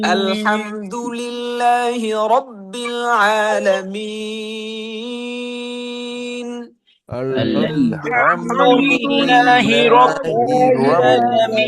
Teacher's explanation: র এর উপর জবর পেয়েছি, সুতরাং রটা মোটা করে পড়তে হবে